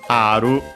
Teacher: the R from English becomes aru in Japanese with the longer vowel also. And then the ru, we have to add u because R can stay, Japanese R can stay on its own like most consonants.